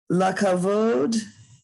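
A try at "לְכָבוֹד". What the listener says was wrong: Lichavod. lichavod. So, because it's a chaf, you see, and then a vet. Lichavod. Lichavod. There's no, right, because there's no dot in the middle.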